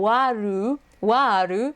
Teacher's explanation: So the best way you can approximate that is with the ah sound. So wa, and because there is an R followed by an L, they stretch it out, and then they add that ru to simulate the L, waru, waru, and then do to simulate the d, warudo.